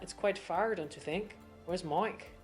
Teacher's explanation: We're going to change those eyes to more of an oi sound